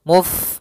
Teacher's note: alirkan dalam huruf Fa sifat hamsnya yaitu mengalirnya nafas